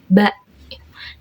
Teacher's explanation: Ba itu keluar dari dua bibir yang tertutup.